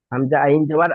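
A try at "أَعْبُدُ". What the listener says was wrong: হা মতন উচ্চারণ হচ্ছে, হা হবে না।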